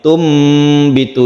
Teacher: Mim yang kecil ini adalah suara dari nun mati digantikan dengan m. Tumbitu ini namanya iklab.